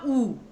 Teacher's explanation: वृत्त क्या होता है आपका सर्कल, तब जैसे आपने बोला ऊ, तो आपके होंठ जो है वो गोलाकार हो गए, तो ये आपका वृत्तमुखी आता है